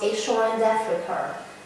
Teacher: When a word which ends in a vowel is followed by another word beginning with a vowel, the so-called intrusive R is sometimes pronounced between the vowels